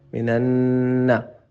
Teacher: نون پہ ادغام غنہ کریں، نون مشدد کا غنہ ہے